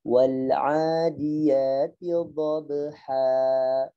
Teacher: Ha dipanjangkan, tidak boleh dimatikan ha, gitu nggak boleh. Dhabha dialirkan sebagaimana dia makhrajnya bil jawfi alifun wa ukhtaha wa hi huruf maddin lil hawa'i tantahi. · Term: mat iwat